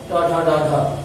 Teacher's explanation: ट ठ ड ढ, इनका उच्चारण स्थान मूर्धा